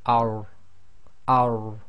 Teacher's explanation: the tafkhim is really done by lifting the back of the tongue a little bit. So you say ar, ar.